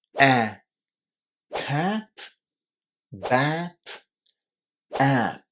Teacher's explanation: It's a sound which is quite difficult to make for a lot of learners of English because it doesn't exist in their mother tongue. And we make it kind of at the back of our mouth, and it's a sound which is between a and e.